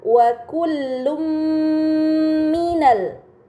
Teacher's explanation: Dan terakhir pada kata wa kullum minal terdapat harokat dhammah tain yang bertemu dengan huruf mim. Ini dinamakan idgham bi gunnah, maka dhammah tain harus dibaca secara melebur dengan gunnah yang dipanjangkan